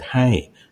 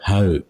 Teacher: So traditionally, any word that you saw that Mai Muon with the Rolly I sound, it was pronounced Au. Even now in Chiang Mai or in Luang Prabang, the word Hai, they'll call it Hau.